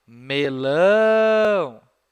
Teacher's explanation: Repararam que lão é a sílaba forte? Você fala ela mais forte, fica mais tempo falando essa sílaba do que o me.